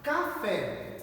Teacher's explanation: a sílaba tônica de café é o Fé, então ela é uma oxítona